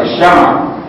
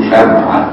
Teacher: الشمع بفتح الميم دي اللغه الفصيحه، المصريين يقولوا شمعه يسكنوا الميم